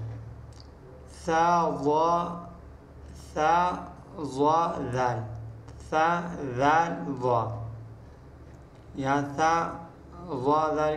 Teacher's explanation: जबान का सिरा और ऊपर के दांतों के अंदरूनी किनारे से यह तीन रूफ अदा होते हैं